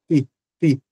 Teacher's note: Mas é claro que em algumas regiões, as pessoas usarão o mesmo T da sílaba tá para a sílaba TI e pronunciarão batatinha, que é esse T, ó, ti, e usa a língua e os alvéolos, né? Não chega a tocar nos dentes.